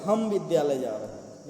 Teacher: हम पर बल दे दिया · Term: बलाघात